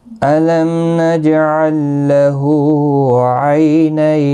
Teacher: الم نجعل له عینین، لم میم ساکن پر اظہار شفوی ہوگا، جیم ساکن پر قلقلہ ہوگا